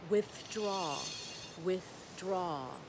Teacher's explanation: the tongue comes through even when the th is in the middle